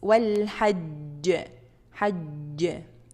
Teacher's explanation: So it's strongest one because of presence of shadda and qalqalah sound. · Second thing you have to do is to make qalqalah, vibration sound.